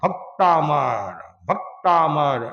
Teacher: जैसे भक्तामर, तो क और त है संयुक्त हो गया, तो पहला जो अक्षर है, आदि जो अक्षर है उस पर वजन पड़ेगा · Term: संयुक्त अक्षर